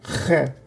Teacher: So this is ha, this is kha, kind of like you're kha, kha, kha, like you're trying to clear your throat a little bit, kha, but from the roof of your mouth. Kha.